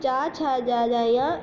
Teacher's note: चा वर्ग चा, छा, जा, जा, या, इनका उच्चारण तालु से होता है।